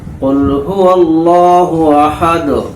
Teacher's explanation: دال پر قلقلہ بھی ہوگا حالت جزم میں، کیونکہ حروف قلقلہ پر جب جزم ہو تو وہاں قلقلہ ہوتا ہے.